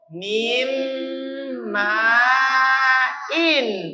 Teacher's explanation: Berarti bunyi dari nun ini dileburkan, dimasukkan, disatukan ke huruf ma. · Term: idgham